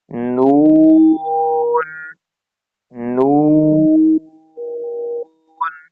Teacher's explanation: اور یہ جو مد ہے یہ مد لازم ہے، 3 سیکنڈ اس کو کھینچیں گے، آواز ناک میں نہیں لے کر جائیں گے